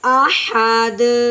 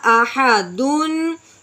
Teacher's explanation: وقف میں یہ تنوین باقی نہیں رہتی ، تنوین باقی نہیں رہتی، بلکہ جس حرف میں یہ آ